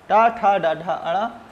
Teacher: इसका उच्चारण स्थान मूर्धा होता है, इसलिए इनको मूर्धन्य कहा गया